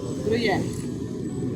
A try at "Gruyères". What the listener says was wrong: Tem um S no final. É Gruyères.